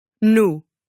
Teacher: Portuguese consistently will just use one pure U